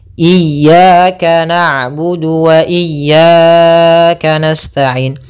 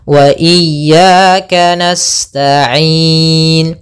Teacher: thi'i yaitu fathah bertemu dengan alif Kemudian yang kedua sama juga ada Mad thi'i yaitu fathah bertemu Alif panjangnya dua harakat